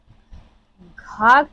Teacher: घ का उच्चारण स्थान कंठ होता है। कंठ वर्णों का उच्चारण स्थान गले से किया जाता है।